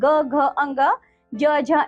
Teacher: जिन वर्णों का उच्चारण करते समय प्राण वायुओं में प्रकंपन होने के कारण गूंज उत्पन्न होती है वे घोष वर्ण कहलाते हैं